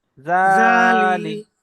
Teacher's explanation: লাম জের লি লি টান হবে না। জালি লাম জেরেলি, লাম লাম জের লি জেরেলি, জালি জালি।